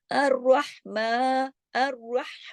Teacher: रा मोटा पढ़ा जाएगा क्योंकि रा पे जबर है, और हा को जमाओ के साथ रहमा, मीम पे खड़ा जबर है।